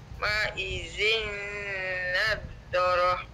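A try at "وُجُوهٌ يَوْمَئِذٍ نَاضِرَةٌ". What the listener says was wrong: na tu panjang tu.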